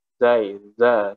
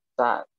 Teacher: Zai ini bersifat jahar. Jadi lebih jelas suaranya dibanding sin. Maksudnya lebih lantang dibanding pengucapan huruf sin.